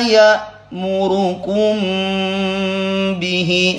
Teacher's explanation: kum masuk hidung ya, khaisum, namanya ikhfa syafawi.